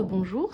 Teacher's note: ça vaut le coup de préciser que le on c'est un o nasalisé